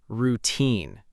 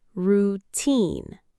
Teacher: Many learners pronounce it routine, with stress on the first part. But in English, the correct pronunciation puts stress on the second part, routine.